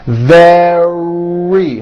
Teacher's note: Your tongue is back and you push out the R.